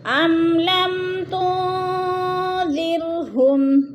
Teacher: زیر کی را باریک پڑھی جائے گی، کیونکہ را سے پہلے لفظ دال کے نیچے زیر ہے، تو را کو باریک کر کے پڑھیں گے۔